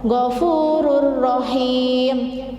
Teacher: jadi cepat dimasukkan tetapi tidak mendengung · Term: idgham bila gunnah